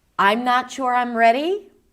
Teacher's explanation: That's rising rising intonation. It feels open. It feels uncertain.